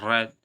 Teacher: र तो थोड़ा सा घर्षण होता है। जीभ की नोक के साथ में। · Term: लुंठित